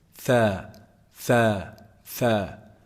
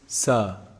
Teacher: fair is actually pronounced from the tip of the tongue and the edge of the upper incisor